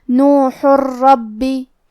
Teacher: کیونکہ با پہ تشدید ہے تو ہمیں دو حرف کے برابر با کو پڑھنا ہے. تشدید کی اصلیت دو حرف ہے جیسا کہ یہاں حرف البا ہے تو یہ دو با ہے، با ساکن اور با متحرک. · را حروف الادغام بغیر غنہ میں سے ہے اور ادغام کا معنی ہے حرف کو حرف میں داخل کرنا. تو ہم یہ تنوین کو را میں ملا کے بغیر غنہ سے لیکن تشدید کے ساتھ یہ حکم کو ادا کریں گے